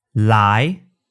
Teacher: But in Cantonese, only the tip of your tongue comes up, and it reaches just behind your front upper teeth